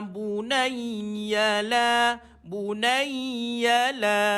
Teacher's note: dua harakat Mak asli bunaiya Bu satu Nun baris atas ada sabdu pada ya tahan dan lepaskan